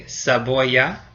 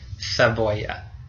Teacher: So in Latin America, that sound is S, like an S. And in Spain itself, that sound is a th, like TH in English.